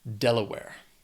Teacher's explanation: Has 3 syllables. Stress is on that first syllable.